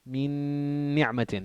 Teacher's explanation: There'd be ghunna for 2 beats.